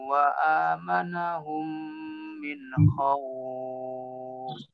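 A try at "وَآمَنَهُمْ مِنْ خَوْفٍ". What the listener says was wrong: Wa amanahum min khawf. Jangan terputus minnya. Wa amanahum min khawf.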